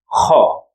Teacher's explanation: it's like snoring sound just like someone who's snoring during his sleep but the sound comes from the throat not from the nose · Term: throat sound